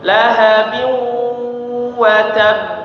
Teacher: Jadi suaranya atau udaranya ada yang masuk ke hidung bukan lewat mulut semua. · Ada dengungnya, jadi suaranya masuk ke hidung. Lahabiu, ya, ada suara sengau di hidung kita.